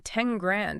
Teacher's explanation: lips so to go from the alveolar Ridge to the lips it's much easier for your mouth to just swap that n Sound for an m